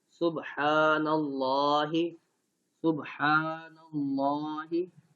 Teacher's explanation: اللہ کے لام کو موٹا نہیں کرتے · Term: لام جلالہ